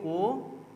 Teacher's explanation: जो वृत्तमुखी होगा उसमें हमारे होंठ की संरचना गोल होगी।